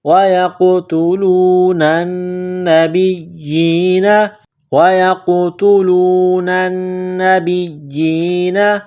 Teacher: قاف ساکن ہے تو یہاں پر قلقلہ کریں گے